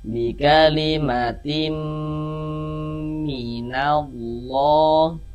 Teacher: Nah, kemudian dighunahkan. Jadi bagian timnya itu suaranya itu kita tahan ya, kita panjangkan sejenak. Nah, sepanjang dua harakat.